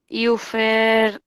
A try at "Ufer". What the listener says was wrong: Ufa. Ufa. No tienes que, la U no tiene umlaut. Ufa, ya. Mira que no tiene umlaut. No tiene, la U no tiene umlaut.